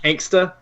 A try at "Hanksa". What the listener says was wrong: Hanksa. There's no T.